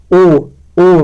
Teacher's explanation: विवृत स्वर में ऐसा निम्न स्वर ऐसी ध्वनि जिनमें मुख यानी जीवा को मुख में जितना संभव हो सके उतना नीचे और तालु से दूर